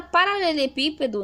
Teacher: nós temos aqui o pi como mais forte, então descobrimos dentro do esquema que é uma proparoxítona, ou seja, a antepenúltima sílaba é a mais forte